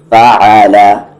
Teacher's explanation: دھیان سے یہ عین ہے، عین کا مخرج مڈل تھروٹ ہے، بیچ والے حلق سے، فعل نہ کہ فعل۔